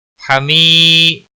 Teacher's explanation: حمی ہا وسط حلق والا ہے. حمی یا مدہ ہے، ایک الف کے برابر کھینچ کر پڑھیں گے